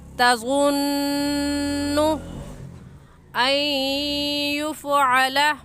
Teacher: ये नून मुशद्दद है और नून मुशद्दद पर हमेशा गुन्ना होता है, इसलिए इस लफ्ज़ पर हम गुन्ना करके पढ़ेंगे